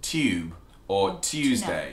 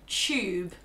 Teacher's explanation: in England we often pronounce TU as CH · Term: CH sound